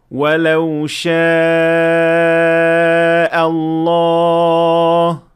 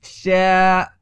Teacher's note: یہاں الف سے پہلے شین آیا ہے جو باریک حرف ہے، اس لیے الف بھی باریک ہوگا ہم کہیں گے شا نہ کہ شا۔